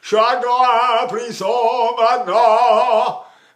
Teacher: You can say the French nasalized vowel.